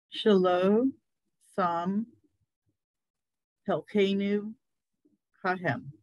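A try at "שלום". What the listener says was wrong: Beautiful. Beautiful, perfect.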